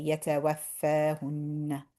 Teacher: We're not actually stressing the fa.